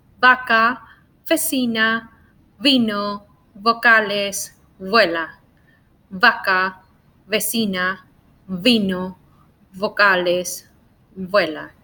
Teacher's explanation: Labio means your lip, and dental, that's referring to your teeth. So we pronounce it with your lips and your teeth. It's similar to the way that you pronounce the F. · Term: labiodental